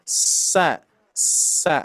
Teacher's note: huruf Sin makhrajnya di ujung lidah menempel ke gigi seri bawah